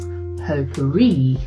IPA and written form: ˌpoʊ.pəˈriː (potpourri)